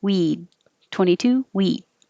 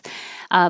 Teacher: You won't hear the D or the T unless there's a vowel after it, so your tongue just goes to that position.